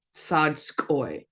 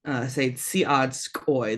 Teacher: In Lushootseed, we tend to kind of drop that I off to make it blend better.